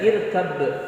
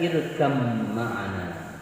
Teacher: Nah, pada lafaz irkab ma'ana membacanya harus diidghamkan, bukan dibaca irkab kemudian diikuti qalqalah sughra lalu ma'ana, tapi harus dibaca irkam ma'ana. Ya, jadi huruf ba-nya lebur kepada huruf mim yang sesudahnya. Ya.